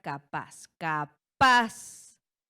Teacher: Nuestra sílaba tónica recae en paz en la última sílaba. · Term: acentuación prosódica